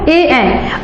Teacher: ए किससे बोला जाता है, तो कंठ और तालु से